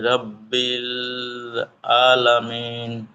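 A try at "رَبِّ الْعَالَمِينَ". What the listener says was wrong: একটু টান হবে, আইন খারা জবর আলামিন।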